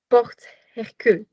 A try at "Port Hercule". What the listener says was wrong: Port Hercule. You don't pronounce the T.